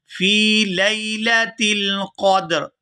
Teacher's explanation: یہاں فا کو یا ساکن کے ساتھ ملائیں گے تو کھینچ کر ادا کریں گے کیونکہ یہ یائے مدہ ہے